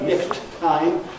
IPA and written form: ˈnekst ˋtaɪm (next time)